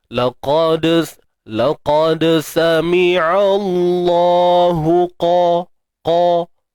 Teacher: Untuk qaf tidak. Qaf kekalah dengan makhraj dia, tebal dengan sifat dia isti'la tu.